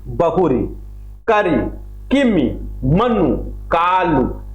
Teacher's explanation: शब्दों के अंत में छोटी ई छोटा उ की प्रधानता रहती है।